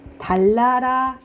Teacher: 순행동화. 근데 이거는 니은이 리을이랑 똑같이 바뀌었지. 그러면 완전동화인 거예요.